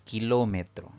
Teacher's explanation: Al pronunciarla, la mayor fuerza de voz recae en la antepenúltima sílaba contando de derecha a izquierda. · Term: palabra esdrújula